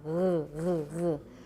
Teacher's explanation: that's a voiced velar fricative